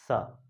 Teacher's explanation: इस स के उच्चारण में जीभ दांतों को स्पर्श करेगी